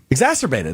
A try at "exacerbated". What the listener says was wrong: There's a C. I think you're missing the C.